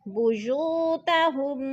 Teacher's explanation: وہ مدہ کو ایک الف دو حرکات کے برابر ہم نے لمبا کر کے پڑھنا ہے